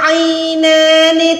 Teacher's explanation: عین کو آپ نے حلق کے درمیان سے ادا کرنا ہے۔